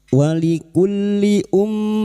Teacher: Kita menyenandungkan Ghunnah Musyaddadah sebanyak tiga harakat.